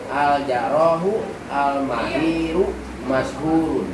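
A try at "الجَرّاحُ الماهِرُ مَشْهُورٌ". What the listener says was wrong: Bacanya jangan dipotong-potong begitu ya, nggak enak. Bacanya itu al-jarrahul mahiru.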